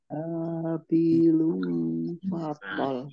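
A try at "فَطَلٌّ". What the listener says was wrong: Ini lamnya double. Ya. Lam tasdid ya, sama lam sukun. Maka di sini lamnya dibaca double.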